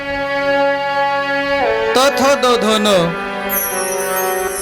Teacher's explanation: दाताला जीभ लागल्याशिवाय या वर्णाचा उच्चार होत नाही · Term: दंत्य वर्ण